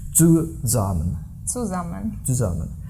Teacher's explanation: With buzzing S. Yeah, the S is always buzzing when a syllable begins with it